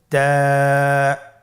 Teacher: তা হরফটি বারিক হরফ এবং এক আলিফ টেনে পড়তে হবে · জিহ্বার আগা সামনের উপরের দুই দাঁতের গোড়ার সঙ্গে লাগিয়ে উচ্চারিত হয়